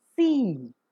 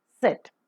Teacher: While the s sound is pronounced, the vocal cords are drawn wide apart and hence it becomes voiceless. · So the three-term label for the description of s as in sit is voiceless because the vocal cords do not vibrate, alveolar because the tip of the tongue comes very close to the alveolar ridge or the teeth ridge, and fricative because a close approximation stricture is observed and the air passes through the narrow gap with audible friction.